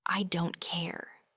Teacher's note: You'll notice that very light R sound in the middle.